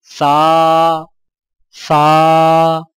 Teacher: زبان کی نوک کو سامنے والے اوپر کے 2 دانتوں کے اندرونی کناروں سے نرمی سے لگا کر باریک آواز میں پڑھیں